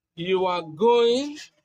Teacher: with a rising tone, it is a question.